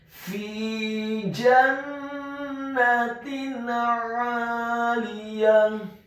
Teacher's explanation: Kata 'aliyah, huruf ainnya ditekankan, keluar dari tenggorokan bagian tengah, fathah 2 harokat karena setelahnya ada alif. · Huruf ya-nya dibaca tipis, fathah 1 harokat. Dan di akhir ayat huruf ta marbutahnya diubah menjadi huruf ha yang tafkhim yang tebal dan dibaca sukun